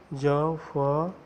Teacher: इन व्यंजनों के उच्चारण में श्वास मुख अवयवों से रगड़ खाते हुए बाहर निकलती है। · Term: संघर्षी व्यंजन